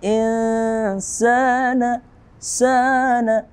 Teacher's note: nun sukun atau nun mati bertemu dengan sin. Hukum tajwidnya adalah ikhfa, samar-samar.